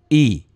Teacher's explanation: Ini mad tabi'i tuh kasroh dengan ya mati.